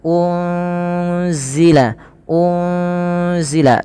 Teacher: pada lafal unzila ini ada nun sukun bertemu dengan huruf Zai Apabila ada nun sukun bertemu dengan huruf Zai ini cara membacanya adalah nunnya disamarkan kepada huruf Zai ya unzila unzila sembari ditahan dengan dua harakat bunyinya dan ini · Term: Ikhfa Hakiki, ikhfa hakiki